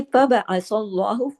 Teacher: अल्लाह के नाम में लाम को हैवी करना पड़ेगा क्योंकि अल्लाह के नाम से पहले सा पे जबर है